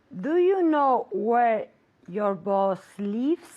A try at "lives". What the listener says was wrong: Muy bien. Lives. Muy corto. Lives. Not leaves. Leaves es salir.